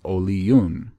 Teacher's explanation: the e and o sound would not combine together as a diphthong to create one sound but it would have its own sound